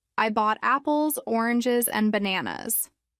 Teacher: rise fall for a list